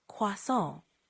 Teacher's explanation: Try emphasizing the nasal sound at the end a bit more